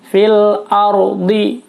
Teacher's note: ro-nya tebal, ro tafkhim karena sebelum ro sukun berharakat fathah